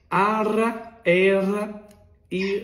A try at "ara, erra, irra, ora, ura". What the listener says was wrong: Não, o seu R tá muito... Muito forte. É a pontinha, olha aqui, ó.